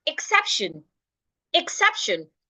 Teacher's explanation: I'm stressing the c e p that is why sep is written in capital the other parts I am not stressing them so the word